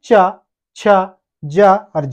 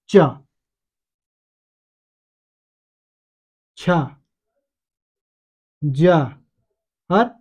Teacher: जब हम च बोल रहे हैं तो कहीं ना कहीं हमारे जो मुंह से जो हवा निकल रही है उसे संघर्ष करना पड़ रहा है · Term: स्पर्शी संघर्षी व्यंजन